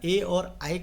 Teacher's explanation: ए और आई का उच्चारण स्थान कंठ तालु है